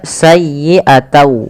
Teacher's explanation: Karena dia bertemu dengan wau, huruf n-nya itu diganti diganti dengan wau. Maka sayyiata langkah kedua ditahan dengan gunahnya. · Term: idgham